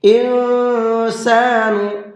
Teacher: یہاں نون کے اندر اخفا کریں گے، اس لیے کہ نون ساکن کے بعد میں سین ہے اور سین اخفا کے حرفوں میں سے ہے۔